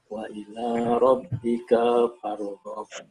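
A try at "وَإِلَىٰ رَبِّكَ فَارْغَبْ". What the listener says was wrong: Wa ila rabbika farghab. Kapnya pendek. Wa ila rabbika farghab.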